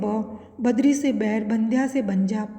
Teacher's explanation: यह हिंदी की अल्प प्राण सघोष स्पर्श ओष्ठ ध्वनि है।